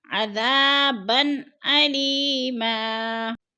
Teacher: دو زبر تنوین آگے حروف حلقی میں سے حمزہ آ گیا تو ہم نے ادھر اظہار کرنا ہے، اخفا نہیں کرنا · علی پہ یا مدہ ہے، یا مدہ کو ہم نے ایک الف دو حرکات کے برابر کھینچ کر پڑھنا ہے